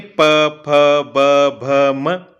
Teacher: बिना ओष्ठ का स्पर्श किए, बिना ओष्ठ को छुए आप इनका उच्चारण नहीं कर सकते हैं, है ना, इसलिए यह कौन से ओष्ठ से आपके स्पर्श हो रहे हैं, इसलिए इनका उच्चारण स्थान क्या हो गया है, ओष्ठ हो गया है।